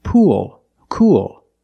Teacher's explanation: You have the long ooh sound followed by the dark L.